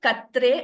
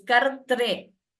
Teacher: It is not Katre, it is Kartre. So, r twice, Kartre.